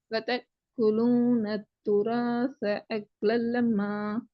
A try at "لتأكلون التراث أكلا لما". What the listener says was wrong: இங்க காப்புக்கு கூ என்ற உச்சரிப்பு மட்டும் தான் கொடுக்கணும். இக்கு என்று கொடுக்க கூடாது. கூ என்றது மட்டும் தான் கொடுக்க.